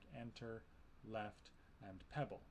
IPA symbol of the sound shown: ɛ